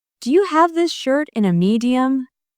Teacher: The stress is on have, shirt, and medium.